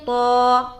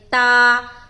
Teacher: اس کو ہم موٹا ادا کرتے ہیں جیسے کہ طا, اور اس کو ہم باریک ادا کرتے ہیں تا